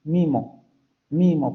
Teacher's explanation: ese fonema anterior cerrado, no labializado, no se realiza como un fonema oral, sino como un fonema nasal. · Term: rasgo de nasalización